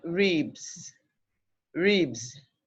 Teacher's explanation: That's because this letter B or sound B is a voiced consonant. So the letter S there after it, signifying the plural form, is pronounced Z.